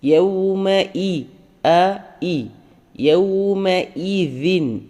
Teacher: ഹംസ തൊണ്ടയിൽ നിന്ന് തന്നെ വരണം